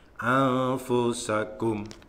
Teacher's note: Kemudian pada bagian ini yang terakhir, anfusakum, ikhfa, bacaan ikhfa, samar-samar. Jadi nunnya itu sudah samar-samar, tidak lagi an, itu nunnya jelas, tapi bibir, lidah, giginya itu sudah mengarah ke huruf fa.